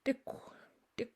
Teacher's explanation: It's almost a borderline T/D, but it pops out a little harder than you would in English. Dick, dick, for belly button. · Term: hard T